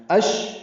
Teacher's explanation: شین ساکن ہے اس پہ ہمس ہے، تفشی ہے، آواز منہ میں پھیلتی ہے